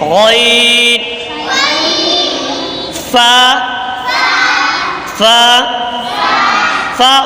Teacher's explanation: ऊपर के दांतों के किनारे और नीचे के होंठ की तरी वाले हिस्से से